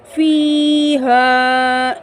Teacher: یا مدہ، الف مدہ، ایک الف کی مقدار کھینچ کر پڑھیں گے